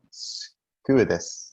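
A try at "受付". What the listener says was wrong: Ah, nearly. It's uketsuke. Uketsuke. Uketsuke.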